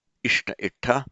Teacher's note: In Pali, as you would expect, the shta becomes double T retroflex, ta, ishta itta, but the ya in Pali comes back.